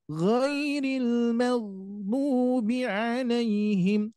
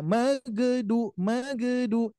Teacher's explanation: Huruf gain khususnya eh diusahakan tidak memantul ditahan saja dulu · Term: ginnya tidak dipantulkan